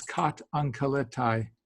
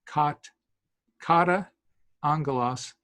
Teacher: if you get two A's in a row, one of the A's gets dropped. So it's kat ankaletai.